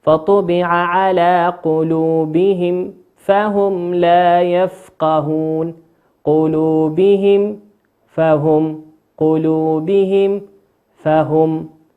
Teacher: ميم ساكنة أتى بعدها حرف الفاء، والفاء من حروف الإظهار الشفوي، تنطق فطبع على قلوبهم فهم لا يفقهون، قلوبهم فهم، قلوبهم فهم.